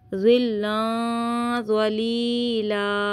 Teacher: ज़िल्लन, यहाँ पे गुन्ना कीजिएगा इक़फ़ा का। · ये हुर्फ़ मुस्तालिया, इसको मोटा पढ़िएगा और ज़ा में सिटी की आवाज़ नहीं आए, कोशिश कीजिएगा।